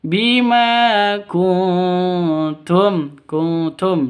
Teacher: Samar didengungkan siap-siap ke huruf t-nya karena bacaan ikhfa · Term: ikhfa hakiki